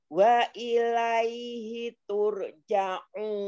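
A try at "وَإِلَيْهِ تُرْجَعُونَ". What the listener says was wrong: Tur, jangan terhenti jangan turja'un. Itu seperti sakta. Turja'un.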